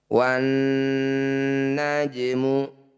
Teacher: Wan najmu, nun bertasydid disebut bacaan gunnah musyaddadah. Bunyi nun harus dengung atau ditahan dulu 2 harokat. Wan najmu, jim sukun disebut bacaan qalqalah, tepatnya qalqalah sugro.